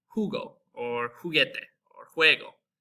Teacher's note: J is also going to make our H sound in English